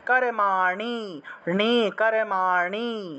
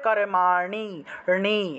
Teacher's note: মূর্ধন্য এর উচ্চারণটা কিন্তু মূর্ধা দিয়ে করতে হয়, অর্থাৎ জিহ্বা উল্টিয়ে